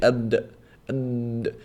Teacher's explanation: The dal you say ad, ad. You can't, the sound of the dal cannot flow. You can't say ad, doesn't work.